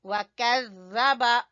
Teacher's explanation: زال زبان کی نوک اور اوپر کے سامنے والے دو دانت